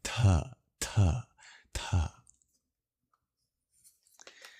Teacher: just a breathy version of a T, since Sanskrit differentiates between its aspirated or breathy and unaspirated plosives